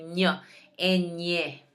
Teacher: So this one's almost nasally. You want to put your tongue on the roof of your mouth and say ñ.